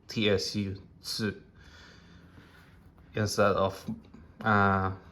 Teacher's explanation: you have to pronounce the tsu, tsu, tsu, instead of lengthening the consonant of the next letter, because this is a big tsu, so you have to pronounce the tsu.